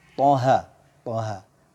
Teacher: To dua harokat, ha dua harokat. Huruf to dibaca tebal.